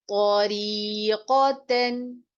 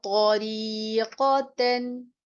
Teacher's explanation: تو کی ادائیگی کو درست رکھیے گا، را کے اوپر مد اصلی کیجیے، قاف کی ادائیگی کو درست رکھیے اور تا کے اوپر اپنے اظہار کرنا ہے، غنے کی آواز نہیں آنی چاہیے.